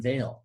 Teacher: But with the V in veil, think about the V in veil. We're only partially impeding the air from exiting our mouth. And we do so over more time with a kind of turbulence. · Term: fricative consonant